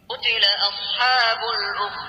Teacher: نخلي بالنا هنا القاف مفخمة، قوتي، والتاء مرققة واللام مرققة.